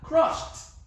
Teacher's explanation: It's not giving us d, it's giving us t. Why? We have a voiceless consonant.